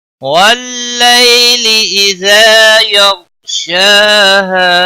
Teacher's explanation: یغ، غائن پر قلقلہ نہیں ہونا چاہیے، اور غائن کو موٹا بھی پڑھنا ہے۔ یغ، شین کے اوپر کھڑی زبر ہے، 1 الف کے برابر کھینچ کر پڑھیں گے۔ ہا کو، ہا الف مدہ ہے، 1 الف کے برابر کھینچ کر پڑھیں گے وقف کی صورت میں۔